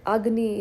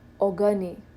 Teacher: a vowel is inserted in between to make the pronunciation simpler